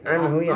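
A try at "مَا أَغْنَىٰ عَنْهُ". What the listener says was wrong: Ya, itu masih samar antara ain sama alif. Pastiin itu anhu, bukan anhu tapi agna anhu.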